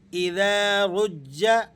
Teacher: را کو آپ نے موٹا پڑھنا ہے، اور جیم چونکہ مشدد ہے تو یہاں آپ نے اسے ذرا سختی کے ساتھ ملا کر پڑھنا ہے